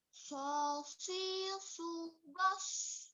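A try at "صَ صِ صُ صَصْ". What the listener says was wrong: Nah, itu masih tipis ya. Nanti takutnya ketukar sama sin ya. Sosi subas. Masih tipis ya. Nah, ini huruf sod, toroful lisan ya, ujung lidah nempel di gigi seri atas ya. Lalu pangkalnya naik, tengahnya turun ya. Ujungnya nempel di gigi seri bawah.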